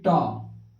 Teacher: मूर्धन्य माने कि जो तालु के ऊपरी भाग में जीभ सटेगा ट, तो उसे मूर्धन्य बोलते हैं।